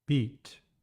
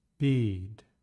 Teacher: Pay attention to the difference between the short flat tone and the long drop tone